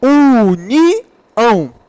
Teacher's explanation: Todas elas são oxítonos porque a sílaba tônica está na última sílaba